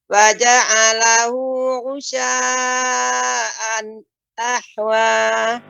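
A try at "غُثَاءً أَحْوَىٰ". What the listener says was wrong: Ya, gutha Ibu. Tha ya, bedakan dengan gusa ataupun gusya bukan. Gutha.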